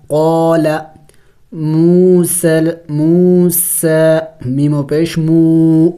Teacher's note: واو مدہ ہے، اس کو ایک الف کے مقدار کھینچیں گے. موسیٰ، یا کے اوپر کوئی حرکت نہیں ہے، اس کے پڑھیں گے نہیں.